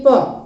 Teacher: उसके बाद फिर आपका आता है कि ओष्ठ मतलब क्या, ओठ, जो अक्षर ओठ के सहायता से निकलती हैं, जैसे प आप बोलकर भी देख सकते हैं उस चीज को, जैसे कि प मतलब ये क्या कि हमारे ओठ को टच कर रहा है और इसमें थोड़ा सा एयर भी दे रहा है। यहाँ पर ये भी पॉइंट पकड़िएगा, एयर भी दे रहा है, मतलब कि कम समय लग रहा है, प मतलब ये प।